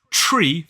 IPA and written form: ʧriː (Tree)